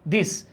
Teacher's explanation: জিভার আগা দাঁতের আগার সাথে লাগায়, হ্যাঁ, উপরের দাঁতের